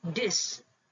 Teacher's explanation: A fricative is replaced by stop.